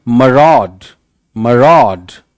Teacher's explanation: मरॉड, रॉड पे ज्यादा जोर है